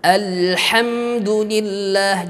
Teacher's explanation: kita harus mengeluarkan sifat tawasuth ataupun bainiyah pada huruf lam tersebut